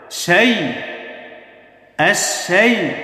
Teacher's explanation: আশ-শাই শিন ইয়াকে ধরেছে, জবরের পরে ইয়া সাকিন। তাহলে জবরের পরে ইয়া সাকিন লিনের হরফ, তাড়াতাড়ি উচ্চারণ হবে